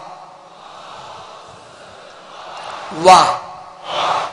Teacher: वाव ज़बर वा, वाव की जो अदायगी है, इसका जो मखरज है, ये दोनों होंठों के गोलाई से अदा होता है।